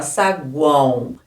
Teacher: É representado, escreve com O, mas é representado pelo fonema U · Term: tritongo nasal